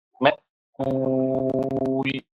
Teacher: اس حمزہ کو جس پر سکون بنا ہوا ہے، اسے آپ جھٹکے کے ساتھ پڑھیں گے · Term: نبر